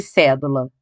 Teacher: A sílaba mais forte é o sé. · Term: antepenúltima